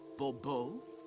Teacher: The emphasis falls on the last syllable.